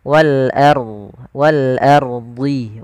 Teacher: Di sini ada hukum tajwid berupa ro tafkhim. Jangan wal ardi, tapi dia ro tebal.